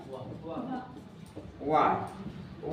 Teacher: वा को दंत ओष्ठ व्यंजन कहते हैं